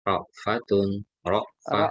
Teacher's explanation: Jadi tak marbutoh ketika sukun menjadi ha ya.